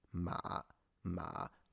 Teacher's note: start at a pretty low but not the lowest and then slightly go down from there